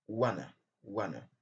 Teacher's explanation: on laisse tomber le son t. Et donc, c'est le son choix qui va rester et ça va nous donner wanna.